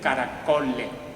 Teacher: la s se pierde la s final de palabra la es final de sílaba caracoles se convierte en un caracole